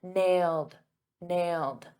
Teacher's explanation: in the past simple that ed is a very soft D